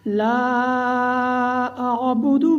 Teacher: لا، اس کے اوپر بھی ماد منفصل ہے، اس کو بھی ہم 4 الف کا برابر لمبا کریں گے